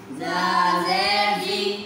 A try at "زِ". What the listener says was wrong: آپ کی سیٹی نہیں آ رہی تا